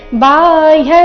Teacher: ಬಾಹ್ಯ ಇಲ್ಲಿ ಬಾ ದೀರ್ಘ ಬರಬೇಕು, ಮುಂದೆ ಹ್ಯ ಅರ್ಧ ಪೂರ್ತಿ ಯ ಸಂಯುಕ್ತಾಕ್ಷರ ಇದೆ.